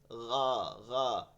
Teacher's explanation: গইনটা উচ্চারণ করে তালুতে একটু ঘষা খাইতেছে